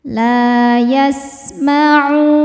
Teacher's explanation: Hukumnya mad tabi'i dhahiri karena ada waw sukun sebelumnya dhammah. Cara bacanya panjang 2 harokat.